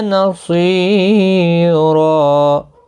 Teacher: الف مدہ بنے گا را، ایک الف کی مقدار کے برابر کھینچ کر وقف کریں گے. اس وقف کو وقف بالابدال کہتے ہیں.